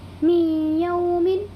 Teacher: یہاں پر بھی نون ساکن کے بعد یہ یا آیا ہوا ہے، اسی لیے کیا ہوگا، اس میں ادغام ناقص ہوگا اور اس میں یعنی نون ساکن کی آواز کو یا میں بدل دیں گے اور تھوڑا سا غننے کے ساتھ ناک میں لے جا کر کے پڑھیں گے